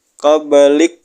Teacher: Kaf ini Hames disukun ya disukun hamesnya keluar anginnya keluar sedikit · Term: hamas